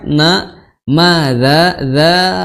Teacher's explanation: dza itu 4 atau 5 harokat karena zal ketemu dengan hamzah, ya, jadi mad jaiz, ya, mad jaiz 4 atau 5 harokat.